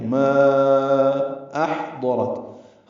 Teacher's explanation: ما میں الف مدہ ہے اور اس کے بعد حمزہ آنے کی وجہ سے مد منفصل ہے، ہم اسے 4 حرکات لمبا کرتے ہیں · ہا ساکن ہے، اس پہ ہمس ہوگا، اس کو وسط حلق سے ادا کریں گے اور نرمی سے پڑھیں گے